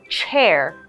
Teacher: the CH makes a CH sound kind of like a cho cho train and you will notice that air is pushed out of the front two teeth